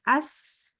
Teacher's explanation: Gigi kita tuh rapat bener. Jadi dia bunyinya nyaring. Rapat. Gigi atas sama gigi bawah. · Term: Huruf sin